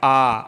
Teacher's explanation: विवृत स्वर की बात करें तो इसके उच्चारण में मुख सबसे अधिक खुला रहता है